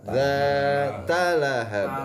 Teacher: Za-nya panjang, 2 harkat. Ta-nya pendek, langsung ke lahab.